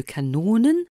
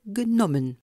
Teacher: Le O transcrit le O long et mi-fermé de kanonen, comme le O bref et mi-ouvert de genommen